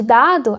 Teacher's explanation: ao produzir o D de dado, a ponta da língua toca os alvéolos superiores.